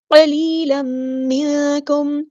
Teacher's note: نون ساکن کی آواز کو ہم نے چھپا دیں کیونکہ یہاں پہ اخفا ہو رہا ہے